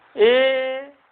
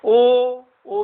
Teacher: इनके उच्चारण में हमारा ओंठ थोड़ा सा आगे आकर वृत्त का आकार ले लेता है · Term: वर्तुल